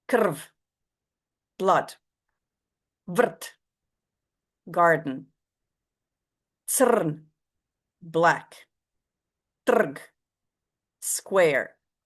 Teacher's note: In Croatian, R can be a vowel. Not like a vowel, not a bit vowelish.